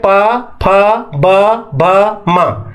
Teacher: दोनों ओट के सहारे से इसे बोला जाता है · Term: ओष